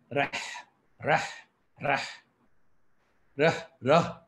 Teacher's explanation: அது தொண்டையிலிருந்து வரும்போது, வெளியே வருவது வெறும் காற்றுதான். அந்தக் காற்றை மட்டும் வைத்திருங்கள், ரஹ், ரஹ், ரஹ், நீங்கள் அப்படி சுவாசித்தால் மட்டுமே , 'ஹா' சரியாக வரும்.